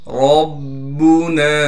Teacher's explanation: तशदीद होने की वजह से थोड़ा ठहराव करके पढ़ेंगे। नून के बाद अलिफ मद्दा होने की वजह से, फिर अलिफ मद्दा पर मद होने की वजह से नून को हम 3 अलिफ के मिकदार खींचेंगे